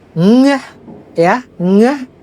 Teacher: kalau ngeh itu udaranya itu lewat ke hidung atau nasal